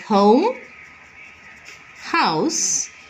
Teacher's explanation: it is produced in the glottis, and the 3-term label is a voiceless glottal fricative